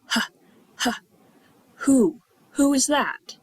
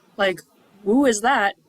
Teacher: So who is one of these cases where the W doesn't make a sound. It's not woo, like woo is that, it's who is that?